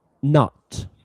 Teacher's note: you changed the vowel a little bit there. It sounds like a kind of uh Midlands accent